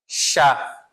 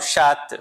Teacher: Eu não pronuncio o T. Eu não falo chata, falo chá.